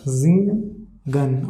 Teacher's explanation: Now third example, singen. S-I after S, vowel is coming, I is coming. Pronunciation of S will be Z, zingen, okay.